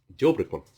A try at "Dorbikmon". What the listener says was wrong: You said Dobrikmon. It's not Dobrikmon, it's Dorbikmon. It's D-O-R.